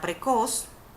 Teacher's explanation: hace la mayor fuerza o intensidad en la última sílaba pero no se le coloca la tilde porque termina en consonante · Por ejemplo, está la palabra precoz, que hace la mayor fuerza o intensidad en la última sílaba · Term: acento, sílaba tónica